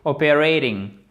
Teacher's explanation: Il y a une articulation qui se fait en anglais américain où le T se transforme phonétiquement en D.